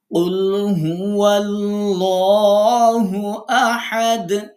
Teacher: সূরা এখলাস যখন তেলাওয়াত করি তখন আমরা বলি কুলহু আল্লাহু আহাদ আমরা লামকে পোর করছি কারণ আগে জবর আছে